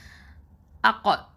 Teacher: நாவின் வேர்பகுதி மேல் முரசை தொடும்போது உச்சரிக்கக்கூடிய எழுத்து தான் இந்த காஃப். Deepest part of the tongue டச்சஸ் the roof of the mouth.